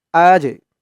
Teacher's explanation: এই জিমটা কল কলার হরফ ধাক্কা দিয়ে পড়তে হবে